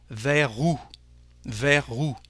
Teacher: But in French, we don't pronounce the last letter, the last consonant, the S. So the liaison is with the letter R